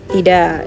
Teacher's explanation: bunyi K dalam tidak kadang seperti hilang saat bicara cepat, seperti tidak, K-nya langsung hilang kan teman-teman. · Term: alofon